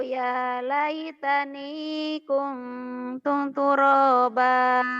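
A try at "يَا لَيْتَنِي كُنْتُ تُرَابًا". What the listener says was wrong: Iya tuh Pak, jangan kuntung ya, kuntuk turoba. Pendek, rohnya pendek.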